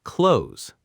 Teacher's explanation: Often pronounced clo-tes with two syllables, but in natural speech it's one syllable, close, like the word close as in close the door, close.